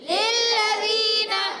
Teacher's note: للذین لام کو لام سے ملا رہے ہیں، لام مشدد ذرا رک کر ادا کریں گے